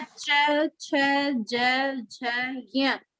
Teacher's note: इसका उच्चारण करेंगे तो हमारी जीभ तालु को स्पर्श करेगी, तालू। जो नरम जगह है उसको।